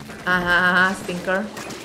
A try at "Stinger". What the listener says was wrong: Sting, not stink.